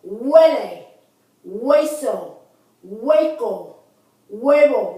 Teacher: Notice that the U once again has that wa sound. I'm not going ooh.